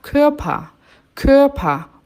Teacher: o ER no final tem som de A, Körper, um azinho, né?